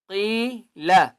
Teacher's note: یا مدہ ہے ایک الف کی مقدار کھینچ کر پڑھیں گے اور قاف کو موٹا کریں گے